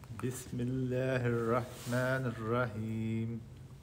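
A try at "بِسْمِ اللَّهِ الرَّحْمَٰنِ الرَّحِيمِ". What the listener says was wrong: Ar-Rahmana, you said. I know you're trying to say Ar-Rahmani, but it doesn't come correct unless you focus and unless like you move your mouth. You were not moving your mouth.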